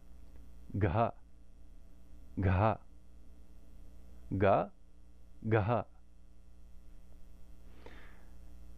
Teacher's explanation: So the difference between ka and ka. If we do the soft aspirated, again we just do ga and add a lot of air.